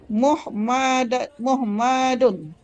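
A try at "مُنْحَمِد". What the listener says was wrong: Nunnya mana? Bukan, nunnya mana? Tadi inhamada.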